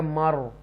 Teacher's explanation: والمر یہاں پر دیکھیں ول، اور یہاں پر یہ ہے مر، تو یہ تفخیم کے ساتھ را پڑھا جائے گا، را ساکنہ سے پہلے جو ہے وہ زبر ہے تو پور پڑھا جائے گا مر۔